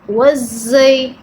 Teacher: زا کو آپ نے جب ادا کرنا ہے تو سیٹی کی آواز آنی چاہیے